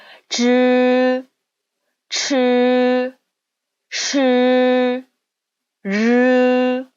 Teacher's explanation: 혀끝을 위쪽으로 오므리면서 입천장에 붙었다 뗀다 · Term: 권설음